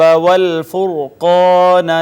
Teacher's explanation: را ساکین ماقبل مدموم ہے، را کو پر کر کے پڑھیں گے